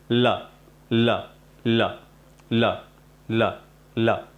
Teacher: ल में हम क्या करते हैं, जो जीभ के हमारे साइड वाले हिस्से हैं, मैं आपको आसान भाषा में बताता हूँ। जीभ के जो साइड वाले जो हिस्से हैं वो हमारे ऊपर के जो पीछे जो मसूड़े होते हैं उनके अंदर की तरफ टच होते हैं और आगे की तरफ जीभ मूर्धा के पास टच होती है।